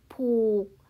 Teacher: Đối với các phụ âm cao, chúng ta sẽ đọc với thanh điệu nặng, hay trong tiếng Thái là siang ek